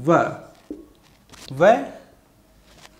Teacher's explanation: वकारस्य दंतोष्टम अर्थात व, व वर्ण जो है इसका उच्चारण स्थान दंतोष्ट है